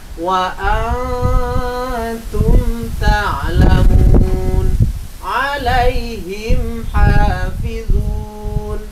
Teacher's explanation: Mim sukun bertemu ta, berarti mim sukun bertemu selain mim dan ba, berarti dinamakan bacaan idhar syafawi. Maka cara bacanya harus jelas pada bibir. Tidak boleh didengung